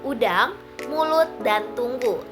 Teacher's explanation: lidah diletakkan di bagian belakang mulut tinggi dan bibir dibulatkan. U contohnya pada kata udang, mulut, dan tunggu. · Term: vokal belakang